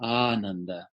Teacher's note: It's a longer vowel. It's exactly twice as long as ah.